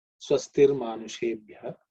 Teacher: Again the visarga becomes Ir.